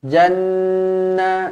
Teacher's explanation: Nun yang bertanda sabdu wajibul gunnah dengung dua harakat